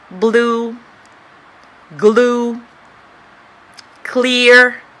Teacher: ال L lateral وكمان alveolar، يعني the tip of the tongue وال blade of the tongue بيبقوا behind the upper front teeth كده. بيظهر ال L في الأول. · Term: clear L